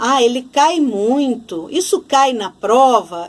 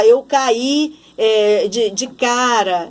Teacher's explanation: Esse cai não pode ser acentuado porque ele é um ai, é um ditongo. É uma sílaba só, em que eu tenho o a e o i juntos.